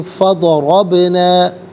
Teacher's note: فا علیحدہ ہے، ضربنا علیحدہ ہے، ملا کر پڑھیں گے فضربنا۔ را پر زبر ہے، را کو پر کر کے پڑھیں گے